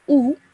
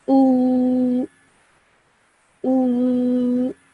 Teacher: we have to stretch that sound out for 2 seconds because of the vowel madda